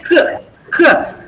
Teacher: When you say K, K, the back of the tongue goes and touches the soft palate. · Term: Velar consonant